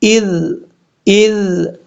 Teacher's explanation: ذال کو بغیر سیٹی کے ساتھ پڑھنا ہے اور قلقلے سے بچنا ہے